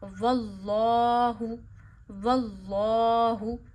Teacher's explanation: जब लफ्ज़ अल्लाह से पीछे ज़बर या पेश हो तो लफ्ज़ अल्लाह को मोटा पढ़ते हैं। यहाँ अल्लाह मोटा पढ़िए, वल्लाहु, और अल्लाह के लाम को एक उंगली जितना खींचिए क्योंकि खड़ी ज़बर है ना, खड़ी ज़बर खड़ी ज़ेर उल्टा पेश को आप एक उंगली जितना दराज करते हैं।